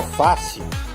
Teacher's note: A paroxítona é a penúltima sílaba tônica, como a palavra fácil.